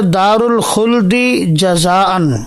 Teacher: دال کا ادغام جو ہے وہ جیم کے اندر ہے